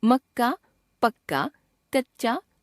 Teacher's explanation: कई बार व्यंजन अपने को ही दोहराते हैं, यानी पहले स्वर रहित व्यंजन के बाद वही स्वर युक्त व्यंजन आता है। इसे द्वित्व व्यंजन कहते हैं, जैसे मक्का, पक्का, कच्चा, 25 आदि।